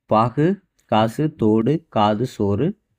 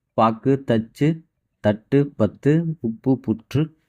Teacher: உங்கிற ஓசையுடைய வல்லின மெய்யெழுத்துக்கள் வந்துட்டு நமக்கு அரை மாத்திரையாக ஒலிக்கும் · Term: குற்றியல் உகரம்